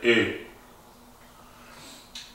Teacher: En cambio, si decimos O, la pronunciamos como si tuviésemos la boca bastante más cerrada. Entonces ponemos la boca como si fuésemos a decir una O y tratamos de decir una E. Entonces nos sale E. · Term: Umlaut